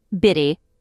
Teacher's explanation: And the vowel 'e' at the end is pronounced like 'uh'.